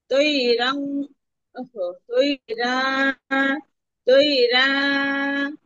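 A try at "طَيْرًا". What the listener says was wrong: রান টান দিচ্ছেন কেন আপু? তাই রন।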